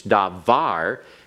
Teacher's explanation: It is a word that has its accent on the last syllable, which is the normal syllable for accents.